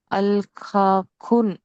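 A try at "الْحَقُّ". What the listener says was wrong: రెండో అక్షరము ఖా కాదు కదా, హా అది. ఐన్ హా. హక్కు.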